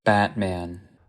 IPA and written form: ˈbætmeən (Batman)